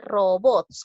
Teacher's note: robots lleva la mayor fuerza de voz en la sílaba bots